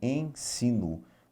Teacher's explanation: ensino na palavra em cima nós vamos ouvir o em nasal o e nasal é isso que a gente vai ouvir